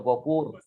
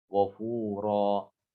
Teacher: Maka tanwinnya diubah, diganti menjadi huruf mad ya, diganti dengan alif lah. Diganti dengan alif dan dibaca 2 harokat saja. Ghafura, tidak boleh lebih. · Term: mad iwad